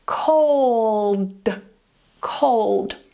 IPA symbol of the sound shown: ɫ